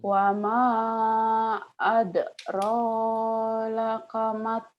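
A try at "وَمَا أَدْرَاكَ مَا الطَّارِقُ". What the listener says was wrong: Kok ada laka? Wa ma adrakamat. Laka. Mattoriq. Wa ma adraka mattoriq gitu.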